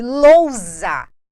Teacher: um s entre duas vogais tem som de z